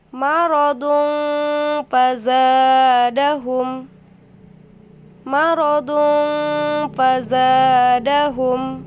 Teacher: menyamarkan huruf nun atau tanwin seperti huruf eng serta ditahan sekitar 2 atau 3 harokat sebelum menyebut jelas huruf di depannya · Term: ikhfa